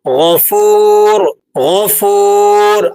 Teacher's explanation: حلق کا تیسرا حصہ جسے ادنیٰ حلق کہا جاتا ہے، یہاں سے دو حروف ادا ہوتے ہیں، غین اور خا۔ غین کی آواز بھاری اور گہری آواز ہوتی ہے۔ اللہ تعالیٰ کے صفاتی نام میں جسے دیکھیں، غفور غفور، آپ کو بھاری آواز محسوس ہو رہی ہوگی۔